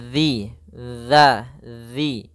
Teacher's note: makhrajnya, tempat keluarnya adalah ujung lidah kita menempel dengan gigi seri atas, dan dia kalau bisa sedikit tergigit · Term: zal